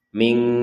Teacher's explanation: Jadi jangan dibaca dengan dengung. Kalau dengung itu kan kedengarannya kan ming, jadi 100% di rongga hidung kita itu berdengung. Itu tidak benar, karena ini bukan 100% dengung.